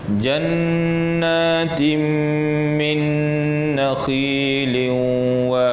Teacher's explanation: Kita memasukkan tanwin ke dalam mim dan juga nun mati ke dalam nun beserta dengan dengung. Ha, dengung tu panjangnya dua harakat. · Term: idgham ma'al ghunnah